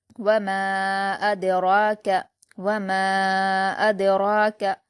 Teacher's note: حمزہ پر حرکت جلد پڑھیں گے، دال پر جزم ہے، حمزہ کو دال سے ملا کر پڑھیں گے، اور دال حروف قلقلہ میں سے ہوتا ہے، اس لیے یہاں پر قلقلہ کیا جائے گا، اد، اد۔ را پر کھڑا زبر ہے، 2 حرکات کھینچ کر پڑھیں گے اور پر پڑھیں گے